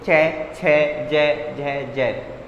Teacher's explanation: जो चे वर्ग के वो तालव्य से बोलते हैं, जिसमें जीभ तालु से लगती हो